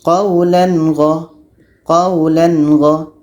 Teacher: Tanwin harus jelas, gha pun harus jelas dan tiada dengung.